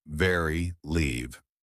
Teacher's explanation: lower lip touches upper front teeth voice on